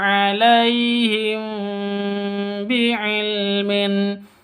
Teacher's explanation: mim sukun atau mim mati bertemu dengan ba bacanya samar didengungkan karena ikhfa Safawi